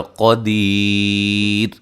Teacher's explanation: اگر ہم یہاں وقف کرتے ہیں تو اگر ہم را کو ساکن کر دیتے ہیں تو پھر یہ بنے گا قدیر. را باریک ہوگی، را موٹی نہیں ہوگی ساکن کی صورت میں